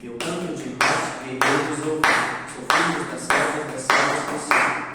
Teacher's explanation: Então a gente tem uma fraca, forte, fraca, fraca, forte. Então, nesse poema, a gente sempre vai ter sílaba tônica na segunda e na quinta, certo?